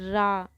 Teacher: रा लुंठित ध्वनि है जिसके उच्चारण में जीभ तालु से लुढ़क कर स्पर्श करे। देखिए रा जब हम बोलते हैं ना तो हमारी जीभ ऊपर से तालु से लुढ़क कर स्पर्श कर रही है।